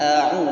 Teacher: ketika kita melafazkan a itu dari makhrajnya halqi, tenggorokan paling bawah, masuk kepada ain di pertengahan. A'u naik ke atas.